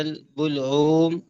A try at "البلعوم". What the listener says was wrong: بلعوم نہیں وقف نہیں کرنا